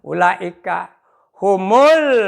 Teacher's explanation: la-nya itu dipanjangkan 4 sampai 5 harkat mad wajib muttasil